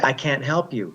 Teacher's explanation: when you use can't in a sentence, you don't hear the t sound at the end.